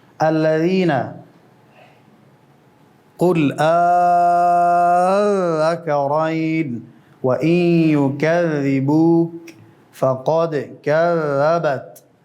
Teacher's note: حرف ذال هوا نداره، باریک و مجهور، یعنی صدا بلند به هوا، نرم، صدا قطع نمیشه. · حرف ذال من طرف اللسان مع أطراف الثنايا العليا. نوک زبان و نوک دو دندان ثنایای علیا و نوک زبان بسیار اندک به طرف بیرون خارج می شود.